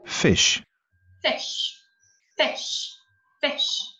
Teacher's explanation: այս մեջտեղի հնչյունն է հետաքրքրում, որը ի է, բայց մեր հայկական ի-ից ինք ավելի կարճ է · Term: ի կարճ հնչյունն